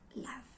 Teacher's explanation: It has no F in it, but we produce the word laugh with labiodental